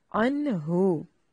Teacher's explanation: اس میں نون ساکن کا اظہار ہے، اخفا یعنی غنہ نہیں کریں گے